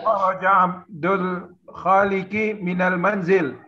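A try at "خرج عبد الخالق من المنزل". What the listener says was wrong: Sahih.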